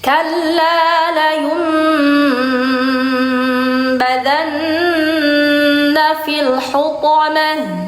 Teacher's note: Jadi karena hunya mencucu, jadi toknya jadi ikut-ikutan mencucu.